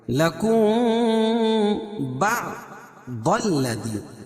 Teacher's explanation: میم ساکن کے بعد با آئے تو اخفاء شفوی ہوتا ہے، یعنی اس میں اخفا کر کے پڑھیں گے · ضاد کو اوپر پڑھیں گے، کیوں؟ ضاد حروف مستعلیہ میں سے ہے